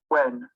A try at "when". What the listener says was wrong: এবং শুধু when না, আপনার হয়ে গেছে when। হ্যাঁ, এখানে h থাকবেন না, when দেখেন নিচে আপনি লেখা আছে w, তারপর এটা একটা প্রোনাউন্সিয়েশনের ভাষা, এখানে একটু h নাই, খেয়াল করে দেখছেন? সো when, হ্যাঁ, আপনি এই জিনিসগুলো খেয়াল রাখতে হবে।